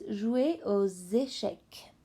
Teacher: the X turns into a Z sound because the next word start with a vowel